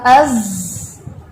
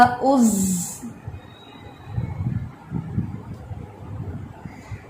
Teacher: اتصال جو ہے وہ نیچے والوں سے ہوتا ہے، ٹھیک ہے، کیونکہ یہ حرف جو ہے وہ ہیوی نہیں ہے، اس لیے زبان اوپر اٹھاتے ہی نہیں ہے، لائٹ لیٹر ہے تو زبان نیچے رہتی ہے ، اس لیے اس کے اتصال میں اس طرح سے کلیئرٹی